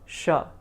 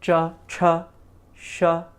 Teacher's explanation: The palatal area, cha, you're also making the sound sha from that same area, sha. So cha, cha, sha, same area.